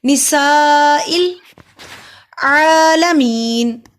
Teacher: سین پہ سٹی کی آواز آئے گی، سا کو لمبا کیا، الف سے پہلے زبر ہے، حروف مد ہے اور اس پہ بڑی مد ہے، بڑی مد کو 3 الف کے برابر لمبا کیا جاتا ہے.